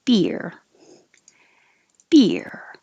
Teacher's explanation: going from a high position to a low position to curl back for the r is what creates an invisible y beer it's not exactly totally too different syllables b but keep